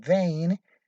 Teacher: your articulators glide from the position of the first vowel to the position of the second for example when pronouncing a as in vein your articulators glide · when pronouncing a as in vein your articulators glide from the vowel a to the vowel e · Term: diphthong